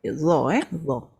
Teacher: Hujung lidah di hujung gigi tebal